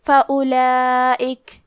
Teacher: ہمیں واو کو ظاہر نہیں کرنا ہے. الف کو پیش سے پڑھ کے حرف اللام کو پڑھیں گے فَأُولَئِكَ. · اس مد میں ہم اپنی آواز 4 مد کے برابر لمبی کریں گے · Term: مد واجب متصل